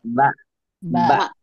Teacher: jadi ketika kita mengucapkan ba nah ini ada yang nempel nih nempel bibir atas bibir bawah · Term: dua bibir